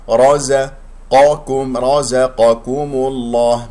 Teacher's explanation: بما انه جاء مضموم قبل اسم الجلال الله، اذا تفخم اللام ، ومن غير ان نفخم الميم، الميم مرققة، رزقكم هكذا وليس